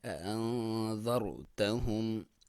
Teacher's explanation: اسے اخفا بولا جاتا ہے، یعنی ناک میں سے آواز نکالیں گے، نون کے اوپر ساکن ہے، انذرتہم۔